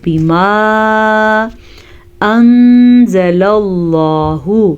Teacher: نون ساکن ہے اور نون ساکن کے بعد زا حروف اخفا میں سے ہے تو ہم نون ساکن کو چھپا کے پڑھیں گے غنے کے ساتھ پڑھیں گے